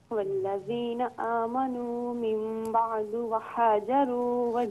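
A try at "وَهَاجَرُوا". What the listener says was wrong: ایک منٹ، اسے وحاجروا نہیں پڑھیں گے، وحاجروا، اس ہا کو ہاں نارمل پڑھیں۔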